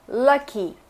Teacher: Schwa é um som de vogal que não existe em português, que é esse O.